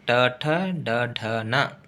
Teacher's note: ಮೂರ್ಧನೆ ಅಂದ್ರೆ ನಾಲಿಗೆಯನ್ನು ಹಿಂದೆ ಚಾಚಿ ಬಾಯಿಯ ಮೇಲ್ಭಾಗ ಭಾಗದಲ್ಲಿ ಅಂದ್ರೆ ಗಂಟಲವನ್ನು ಸ್ಪರ್ಶಿಸಿದಾಗ ಉಚ್ಚಾರಗೊಳ್ಳುವುದರಿಂದ ಇವುಗಳಿಗೆ ಮೂರ್ಧನ್ಯ ಅಕ್ಷರಗಳು ಅಂತ ಕರೀತಾರು